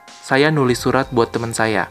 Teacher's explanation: Also notice that menulis loses its prefix, but it doesn't revert to its root form tulis. Instead, it maintains the nasal sound at the beginning. And one more small difference we can see is that the word for friend, teman, is pronounced more like temen.